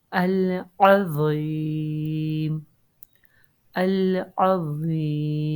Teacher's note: While pronouncing wa, the back end of the tongue is raised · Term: heavy letter